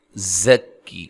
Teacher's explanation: بھی اور یا کو بھی، نا الف مدہ ہے، وَيُزَكِّيكُمْ زکی زا کو زور سے ادا کرنا ہے، سیٹی سے ادا کرنا ہے